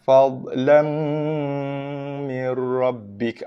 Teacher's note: Diidghamkan, dimasukkan bacaan ke dalam huruf ra dan juga huruf lam tanpa dengung.